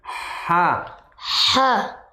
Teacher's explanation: Kalau ha tenggorokan bagian tengah tengah